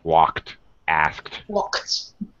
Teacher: After a K, a verb with a K, if you're doing past tense, it sounds like a T.